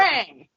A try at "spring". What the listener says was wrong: Spring. It's with an A, no I. Spring. Twang. That's spring.